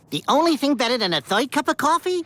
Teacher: The ra, the English ra, which is a voiced alveolar approximant, shifts in terms of place of articulation and it becomes a voiced palatal approximant.